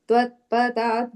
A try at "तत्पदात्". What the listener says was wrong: the third line, last word, tat padat. You said twa sound, it's ta. Tat padat.